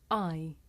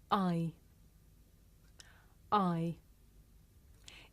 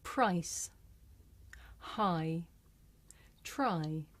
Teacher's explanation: this is a diphthong a double vowel sound the shape the mouth makes changes from the beginning of the sound to the end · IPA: /aɪ/